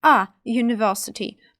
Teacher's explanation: літера ю дає нам два звуки й та у й приголосний звук не голосний